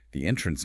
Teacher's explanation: noun stress on the first syllable